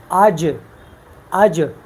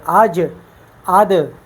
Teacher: آواز رک جاتی ہے اور آواز میں سختی ہے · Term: حروف شدیدہ